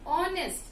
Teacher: I do not pronounce H alphabet, rather I say honest. I do not say honest, okay?